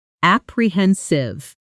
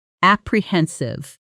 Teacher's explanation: The stress here lands on the third syllable, and the ending softens